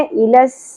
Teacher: لس, واو اور حمزہ کے اوپر ایک ایک حرکات ہے, زیادہ نہیں کھینچنا ہے, وا ای نہیں پڑھنا, لس. سین میں سیٹی کا ایلیمنٹ کلیئر ہونا چاہیے. ایلس, سین کے اوپر ایک ہی زبر ہے, زیادہ نہیں کھینچنا.